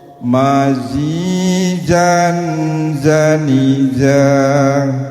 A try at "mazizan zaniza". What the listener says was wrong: Tadi terpeleset ke ja. Zazizu zuzan zanizazna minal muzni mazizan zaniza.